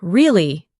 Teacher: when you ask a question like really, your voice goes up slightly at the end